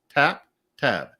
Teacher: I say tap a little higher than tab without even thinking about it.